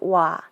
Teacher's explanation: in front so oda meaning to come comes into wa because you get the diphthong when o and ah come together